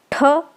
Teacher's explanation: ये जो ठ है वो भी महाप्राण है